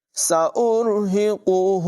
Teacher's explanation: سین میں سیٹی کی آواز نمایاں کریں گے، را کی آواز پر ہے، ہا حلق کے نچلے حصے سے پڑھا جائے گا